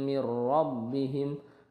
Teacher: Mir rabbihim nun bertemu ra. Ini dihukumi idgham bila gunnah, masuk ke ra tanpa dengung. Nunnya itu dianggap tidak ada, tidak dibaca langsung ke ra.